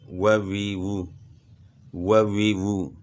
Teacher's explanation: واو زبر و، واو زیر وی، واو پیش وو، و وی وو، و وی وو، کھینچنا بھی نہیں، یعنی حرکات کو ویسے بھی نہیں کھینچنا، جہاں حروف مدہ نہ ہو یا کھڑی حرکات نہ ہو تو ان کو نہیں کھینچنا۔ و وی وو یعنی ہونٹ گول ہوں گے، اور اگر آپ اوپر والے دانت نچلے ہونٹ کے ساتھ لگانے سے پھر و وی وو ہوگا تو پھر غلط ہو جاتا ہے۔